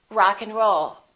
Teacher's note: we reduce the a and the d those disappear often